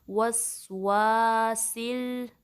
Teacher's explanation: वाव पे फतहा है, अलिफ मद्दा है, ड्रॉप नहीं करनी, 2 काउंट्स लंबा करना है